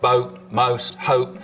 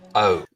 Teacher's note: the vowel sound in boat, most, hope, starts with the tongue further forwards in the mouth. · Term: goat fronting